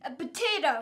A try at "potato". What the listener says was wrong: Sometimes when you say potato, it sounds like you say it with a B. A potato. It's potato with a P.